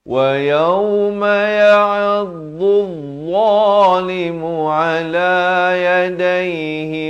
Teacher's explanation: dad ini dad baris dhammah bunyi dhu di tepi lidah. Dia bertemu dengan dha pula di hujung lidah ni